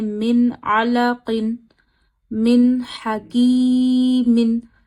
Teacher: नून की आवाज जरा भी नाक में नहीं रोकनी है। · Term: नून साकिन